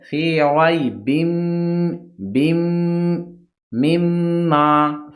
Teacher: تنوین کا یہاں پہ ادغام ہوگا، با کو میم میں ملا کر پڑھنا ہے، جیسے فی ریب بم مما، پھر میم کو میم میں لانا ہے کیونکہ دوسرا والا میم ہے اس پہ بھی تشدید ہے۔